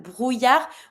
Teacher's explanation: And you don't pronounce the D.